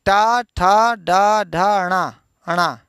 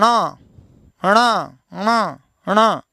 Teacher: हाँ, ये गड़बड़ है, अणा वाला गड़बड़ है। अणा में बोलते समय आपको मूर्धा तो लेना ही है, नासिका भी लगा देनी है। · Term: मूर्धा और नासिका